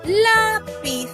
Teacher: en la palabra lápiz, la sílaba tónica es la penúltima, que es la.